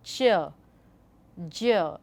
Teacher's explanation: there is a stop, and then it releases slowly